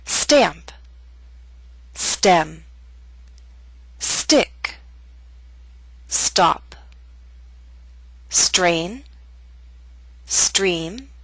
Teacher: All these words begin with st or str. So be careful not to release a strong puff of air.